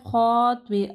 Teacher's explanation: تو کو ہیوی پڑھنا ہے، خا کو ہیوی پڑھنا ہے